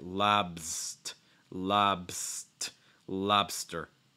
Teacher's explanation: notice that consonant cluster there too right you get the b the s and the t don't insert any vowel sounds in between